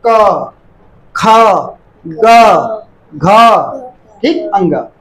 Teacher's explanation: पहला जो क वर्ग होता है वो कंठ से बोलते हैं। कंठ माने कंठ माने गले से।